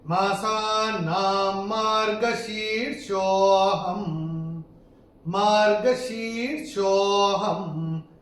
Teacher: शीर्षो को तो बोलेंगे थोड़ा सा खींच के बोलेंगे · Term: विलुप्त अ